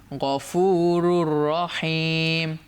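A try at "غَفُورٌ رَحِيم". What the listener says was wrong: র দুপেশ আছে, পরের রকে ধরে ফেললো। গফুরুন আর হলো না, কি হলো? গফুরুর রহিম।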